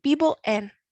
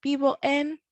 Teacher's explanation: we're remembering that the V's are a soft B sound